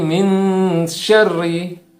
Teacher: Huruf ro yang bertanda kasroh itu artinya atau dibaca secara tarkik atau tipis